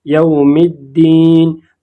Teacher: फिर इसके बाद अलिफ लाम आया है और इसके बाद हुरूफ शमसिया में से दाल आया है, और हुरूफ शमसिया जब अलिफ लाम के बाद आ जाए तो वहाँ पर हम लाम को ज़ाहिर नहीं करेंगे, बल्कि उस लफ्ज़ हुरूफ शमसिया को ज़ाहिर करेंगे। जैसे यहाँ पर अलिफ लाम को हमने ज़ाहिर नहीं किया बल्कि दाल को ज़ाहिर किया, यौमिद्दीन।